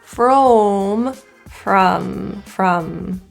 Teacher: this vowel is neutral again jaw together from from the lips are in a neutral position as well